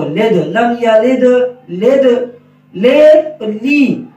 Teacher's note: لام کے نیچے زیر جو ہے یہ مجہول نہ ہو، لد، لم یلد لد، لید لی، دونوں آوازوں میں فرق محسوس ہو رہا ہوگا.